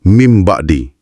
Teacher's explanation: Awak tak dengar bunyi N. Sebaliknya awak dengar bunyi M yang ringan dengan dengung sebelum masuk ke bunyi B.